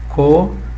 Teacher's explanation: Uma vogal mais uma outra vogal em sílabas separadas, em sílabas distintas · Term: hiato